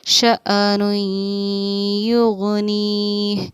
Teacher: اس کو سمجھیے دھیان سے، یہ حمزہ ہے اور اس پر ساکن یعنی جزم سکون ہے. حمزہ ساکنہ کو پڑھنے میں ہمیشہ ہمارا جھٹکا ہوتا ہے